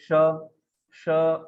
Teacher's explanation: तालव्य श है, ये श, श आप देखोगे तो आपके जिह्वा का मध्य भाग तालु को लगता है, श। ये जो श है, श, जैसे आप ट बोलते हो वैसे आपने ये श बोलना चाहिए।